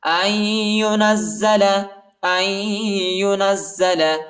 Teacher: اور نون کو زا کے ساتھ ملائیں گے، ٹھیک ہے، اور زا کو شدت کے ساتھ سختی کے ساتھ پڑھیں گے